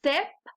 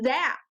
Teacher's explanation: they're both made by putting your tongue up against your teeth the only difference is that z or the z is buzzier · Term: buzzy sound